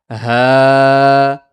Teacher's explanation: हलक के सीने की तरफ वाले हिस्से से ह बाहरी करके निकालेंगे